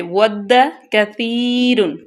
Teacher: کاف کو باریک، تا کو نرمی سے · سب سے پہلے ہے وَدَّ كَثِيرٌ مِّنْ أَهْلِ الْكِتَابِ، واو کو ہونٹوں کی گولائی سے ادا کریں گے، دال کو سختی سے۔